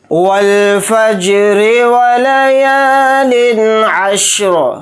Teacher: اور اگر یہاں پر ہم آیت کریں گے، سانس توڑیں گے تو را کو ساکن کر کے پڑھیں گے. اگر آیت نہیں کریں گے تو پھر را کو جلدی پڑھیں گے، را کو باریک بھی پڑھیں گے کیونکہ را کے نیچے زیر ہے · یا کے ساتھ الف مدہ ہے، یا الف زبر یا کو تھوڑا کھینچ کر پڑھیں گے · واو کو لام ساکن کے ساتھ ملا کر پڑھیں گے، الف نہیں پڑھا جائے گا. فا کو جیم کے ساتھ ملا دیں گے، جیم کے اوپر جزم ہے تو جیم کے اندر قلقلہ کریں گے.